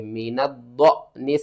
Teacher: الف کے اوپر جزم ہے تو جھٹکے کے ساتھ پڑھیں گے